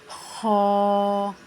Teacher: خا حلق کے درمیانی حصے سے ادا ہوگا اور یہ پر یعنی موٹا پڑا جائے گا